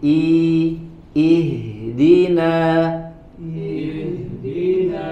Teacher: pada huruf hamzah ya di huruf yang pertama di sini harus dibaca tipis ya Jangan dibaca tebal